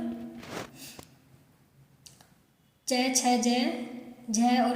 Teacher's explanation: च, छ, ज, झ और न ये क्या कहलाते हैं, हमारे तालु के स्पर्श व्यंजन।